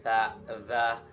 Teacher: Konsonan ini merupakan pertemuan ujung lidah dengan ujung gigi atas dan gigi bawah. Jadi lidah ini berada di tengah-tengah antara gigi yang atas juga di gigi bawah. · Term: konsonan interdental